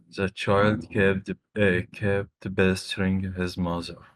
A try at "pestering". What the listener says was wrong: Is it bestering or okay, is it bestering or p pestering? Which one? P pestering. Pe-